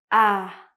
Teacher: my tongue is very low and my chin as well. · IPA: /æ/